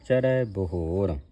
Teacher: ਨਾ ਓਹੁ ਚਰੈ ਬਹੋਰ ਚਰੈ ਪੜਨੈ ਇਹ ਸ਼ਬਦ ਭਾਰਾ ਸੰਗਤ ਜੀ ਕਿਉਂਕਿ ਰਾਰੇ ਦੇ ਪੈਰ ਵਿੱਚ ਹਾਹ ਲੱਗਾ ਇਸ ਨੂੰ ਭਾਰਾ ਉਚਾਰਨ ਕਰਨਾ